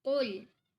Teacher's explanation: They are always heavy and the sound is unique. It is full feeling in your mouth and the back of your tongue must be raised.